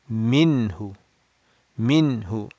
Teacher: we will make the noon clear and short